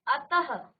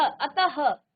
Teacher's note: विसर्ग का उच्चारण आधा ह की तरह